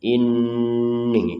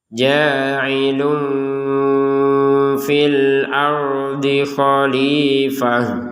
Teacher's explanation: Kalau ini kan dengungnya tidak 100% karena memang secara hukum ini namanya ikhfa samar. Jadi antara dibaca jelas dan dibaca dengung ya.